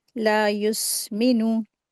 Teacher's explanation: ला को दो हरकात खींचते हैं